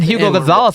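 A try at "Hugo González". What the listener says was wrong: His name's Hugo. Hugo Gonzalez. H is silent. The H is silent.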